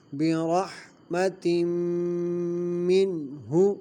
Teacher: تنوین کے بعد حروف یرملون میں سے میم آ رہا ہے، ادغام مع الغنہ ہوگا۔ · منہ میں نون ساکن کے بعد حروف حلقی میں سے ہا آ رہا ہے، تو یہاں پہ غنہ نہیں کریں گے۔